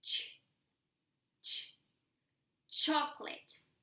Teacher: You put your tongue as if you were saying t, t, and then the sound sh.